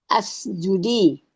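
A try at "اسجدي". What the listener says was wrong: Ya, bukan asjudi ya. Kalau tandanya begitu itu bacanya us. Ya, itu kalau yang diperintahkan perempuan gitu ya. Yang membedakan ya. Nah, sehingga coba lihat nih, kalau untuk usjudi, karena ada yang merah ini, merah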